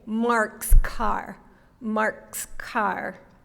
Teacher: what happens to that s when we say Mark's Car Mark's Car well the tongue moves back in the mouth